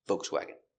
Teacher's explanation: And some people say Volkswagen with no L, just V.